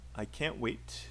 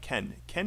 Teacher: can't is usually stressed unlike ken ken is usually unstressed